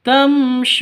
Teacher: suu diperpanjang dua ketukan karena ada sukun waw yang didahului oleh dammah, mad asli atau mad thabi'i.